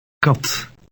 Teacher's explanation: K in Dutch is also less explosive than the English K.